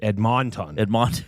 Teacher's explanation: I find the second syllable to be emphasized too much